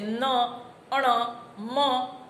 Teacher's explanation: હવા અવરોધાય પણ નાકમાંથી બહાર આવે તો એને અનુનાસિક કહીએ છીએ.